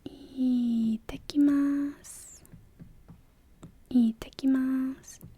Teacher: first little tsu is a glottal stop, kind of. It's like it's taking the T, splitting it in two, and putting it right after the T.